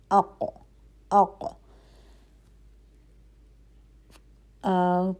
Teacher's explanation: ہماری زبان جو ہے وہ چمچہ نما بن رہی ہے، ٹھیک ہے، زبان کی جڑ اوپر جا رہی ہے، تو ق کی آواز جو ہے وہ موٹی آواز ہے